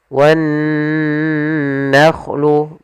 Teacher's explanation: Kemudian pada lafal nun bertasydid di sini ada bacaan gunnah, yaitu adanya nun bertasydid. Cara membacanya ditahan dulu suaranya wan nakhlu, baru dilanjutkan ke gunnahnya